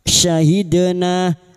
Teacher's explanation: Huruf syin tafasi sya syi syahidna dal sukun yang mati asli di tengah kalimat qalqalah sugro jangan lupa dipantulkan